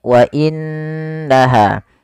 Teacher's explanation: suara nunnya kita tahan dengan sepanjang dua harakat wa innaha tidak langsung dibaca · Apabila ada nun berharakat tasydid, kita hukumi dengan bacaan gunnah, yaitu suara nunnya kita tahan dengan sepanjang 2 harakat. Wa innaha. Tidak langsung dibaca wa innaha, tapi ditahan dulu suara gunnahnya sepanjang 2 harakat. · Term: bacaan gunah